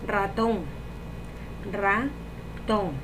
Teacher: La sílaba tónica es ton, porque lleva acento y es la más fuerte.